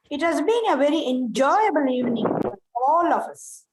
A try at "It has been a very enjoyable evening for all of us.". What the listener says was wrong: Yeah, evening. E should also be stressed. Okay, it has been very enjoyable evening for all of us.